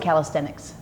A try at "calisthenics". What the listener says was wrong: There's no T at the end. Calisthenics.